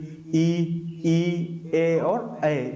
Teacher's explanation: वे स्वर जो जीभ के आगे के भाग से उच्चारित होते हैं वो हमारे अग्रस्वर कहलाते हैं